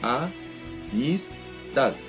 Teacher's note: en la sílaba tad se encuentra la mayor fuerza o la mayor pronunciación o intensidad, el golpe más fuerte. Por lo tanto, esa se convierte en una sílaba tónica.